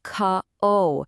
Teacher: You really want to emphasize that second syllable. This is your absolute go-to word when you simply do not believe a single thing someone is telling you.